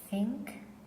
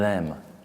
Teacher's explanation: th, which has no vibration, a lot more air, and you have th, which has a sort of vibration on your hand.